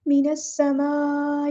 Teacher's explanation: यहाँ पर हमें मद दिख रही है, 4 to 5 काउंट्स हमने इसको लंबा करना है। कनेक्टेड मद है, यानी बड़ी मद है, मद मुत्तसिल, और हमज़ा की आवाज़ वाज़ेह अदा करनी है